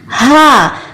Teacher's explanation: حرف ہا اور آج کا ہمارا 5واں حرف حمزہ، ان دونوں کی آواز حلق کے آخری حصے سے آئے گی